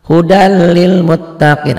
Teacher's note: Nah, nun mati atau tanwin itu kalau ketemu yang dua ini, bunyi nun matinya atau tanwinnya melebur masuk ke bunyi L dan R. Jadi bunyi N-nya berubah menjadi R atau menjadi L. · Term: idgham bila gunnah